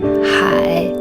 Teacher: It's the third tone, which means ocean.